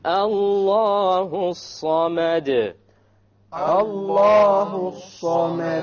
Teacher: The sad is a solar letter, which means we drop the lam when we have the alif lam there.